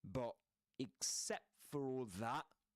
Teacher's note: glottal stop at the end of that